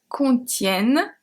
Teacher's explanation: the E is pronounced as a È because it's before two consonants